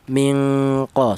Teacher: di mana non mati ini berjumpa dengan huruf qof ini dibaca ikhfa ya untuk yang contohnya ini berupa ifanya ifa adenna atau ifa abad ya bunyi vokalnya ini ng yaitu ifa adna itu ee dengung lebih dominan daripada samarnya bunyi vokal ng